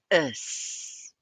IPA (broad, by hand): əs